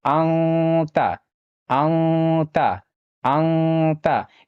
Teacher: یعنی نون ساکن کی آواز کو ناک میں چھپا کر پڑھنا ہے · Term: اخفا